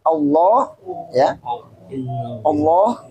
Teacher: Allah lafzul jalalah itu dibaca mufakham atau tebal